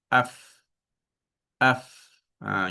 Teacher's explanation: Dia guna bibir bawah dalam yang belah dalam pergi ke hujung kacip atas. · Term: huruf fa